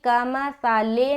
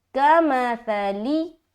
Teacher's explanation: बाज़ औक़ात लोग क्या करते हैं, लाम ज़ेर ले बोलते हैं, जो कि गलत है। लाम ज़ेर ले नहीं बोलेंगे बल्कि लाम ज़ेर ली बोलेंगे